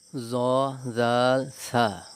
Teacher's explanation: জিহ্বার আগা সামনের উপরের দুই দাঁতের আগার সাথে লাগাইয়া 3টি হরফ উচ্চারিত হয় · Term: 12 নম্বর মাখরাজ